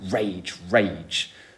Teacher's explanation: So if you look at that, you've then got what you call a spondee, which is these 2 stressed syllables